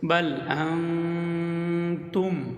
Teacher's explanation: নুন সাকিনের পরে ইকফার হরফ তা আসছে, এখানে গুণনা করতে হবে নাকের ভিতর লুকাইয়া।